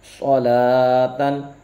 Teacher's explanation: کھڑے زبر کو حروف مدہ کی طرح ایک الف یعنی 2 حرکات کے برابر کھینچ کے پڑھیں گے ، لمبا کریں گے۔ صاد زبر صو، لام کھڑا زبر لا،